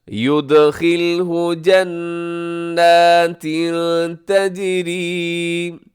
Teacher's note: تنوین کے بعد تا ہے تو یہاں اخفا کریں گے